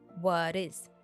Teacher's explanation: The T sound from what is followed by the vowel sound and is turned into a D sound.